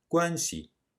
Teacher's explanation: In the word guanxi, it loses its tone.